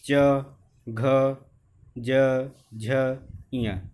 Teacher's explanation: तालव्य यानी च वर्ग, मुख के भीतर की ऊपरी छत का पिछला हिस्सा